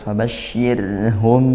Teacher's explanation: mim sukun bertemu ba, ikhfa syafawi dibaca dengung